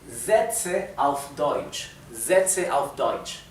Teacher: Y como la S, como todas las veces que tenemos una S al principio de una palabra, la S se pronuncia Z, no es S, no es el sonido suave sino el fuerte